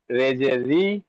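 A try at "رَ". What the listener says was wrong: রে না র বলবেন, রে বলবেন না র বলবেন।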